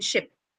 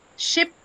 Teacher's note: Sh, ship. There is no obstruction at the ridge. No, you say ship, and the contact is the roof of the tongue and the upper palate, right?